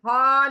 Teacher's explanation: बीच के गले में एक ऊपर का गला, एक सीने की तरफ गला। बीच के गले से यह हा निकलना है।